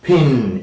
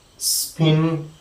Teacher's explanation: we have aspiration and additional air is let out with force forcefully